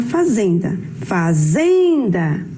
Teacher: O zen é aquela sílaba que a gente falou com mais força. Ela é a sílaba tônica.